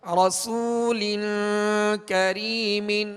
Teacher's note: لام کے نیچے 2 زیر کی تنوین ہے, آگے کاف حروف اخفا میں سے ہے لہذا غنہ کر کے پڑھیں گے. رسول کریم, اور کاف کو باریک پڑھیں گے, یہ ڈنڈی والا کاف